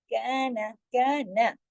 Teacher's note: काफ के साथ अलिफ है, नून के साथ अलिफ नहीं है, दोनों बराबर मिकदार से नहीं पढ़े जाएंगे। काफ दो हरकत, नून एक हरकत।